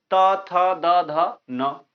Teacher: दांत की जड़ में या मसूड़ों से, मसूड़ों के पास जीह्वा टकराती है तो इन वर्णों का उच्चारण होता है।